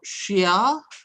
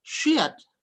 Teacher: shia, rising tone, becomes shiat, falling tones.